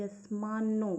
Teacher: य के ऊपर आघात, आधा स जोड़ के बोलेंगे